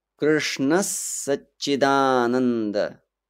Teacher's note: the Visarga can turn to S because of the S in the following word, Satchidananda. So if we take the option, it will sound like a double S.